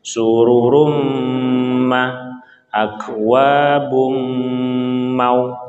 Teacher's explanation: Ya, ini ada tanwin bertemu dengan mim, tanwin bertemu dengan mim. Nah, ini hukumnya adalah idgham bi gunnah, maka kita harus ditahan 2 harokat.